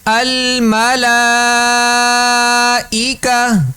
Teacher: جہاں بھی گول تا یہ آئے گی نا، گول تا آئے وہاں پر ہم جب غنہ کریں گے، غنہ کہہ دیا، جب وہاں پر جب ہم وقف کریں گے تو اس کو ہا سے بدل دیں گے، آخر میں ہا پڑھیں گے، تا نہیں پڑھیں گے